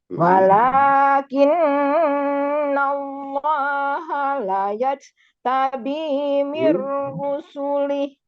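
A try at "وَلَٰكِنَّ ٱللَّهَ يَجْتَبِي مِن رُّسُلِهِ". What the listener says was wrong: Ya, tidak ada la ya. walakinna Allah yajtabi mir rusulih.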